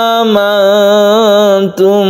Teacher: Nun bertemu dengan ta yang kita sebut dengan Ikhfa ikhfa itu didengungkan juga dibaca samar · yang kita sebut dengan Ikhfa ikhfa itu didengungkan juga dibaca samar mim mati bertemu dengan ba Ini adalah Ikhfa Syafawi ini dipanjangkan juga kita tahan ketika membacanya